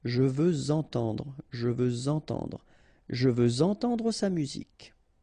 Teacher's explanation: Okay, remember we had the same rule. Even if we've got this X at the end, well, with the liaison it will sound like Z.